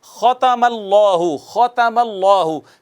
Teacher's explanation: تو خا کو موٹا کر کے پڑھنا ہے